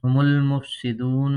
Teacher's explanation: ہم المفسدون میں واو مدہ ہے اور کھڑا زبر، اس کو بھی کھینچیں گے۔